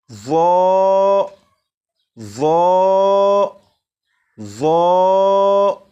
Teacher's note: اب اسے پڑھتے ہوئے 2 باتوں کا خیال رکھیں گے۔ نمبر 1، زبان دانتوں سے بھی لگے۔ نمبر 2، آواز کو بھی موٹا کر کے پڑھیں گے۔